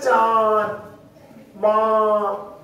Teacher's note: इससे हम जैसे लिखे ना चांद, माँ, तो ये जो नाक के अंदर आवाज गूंज रही है उसके लिए जो है ये अनुनासिक नाम दिया गया है